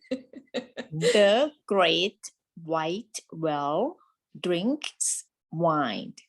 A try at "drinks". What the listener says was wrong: I noticed that the NKS combination is hard for you, right? So actually, the K is pronounced way in the back of the mouth, right? So your tongue stops the air on the roof of the mouth towards the back, like that.